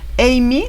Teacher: siempre con el acento en la primera sílaba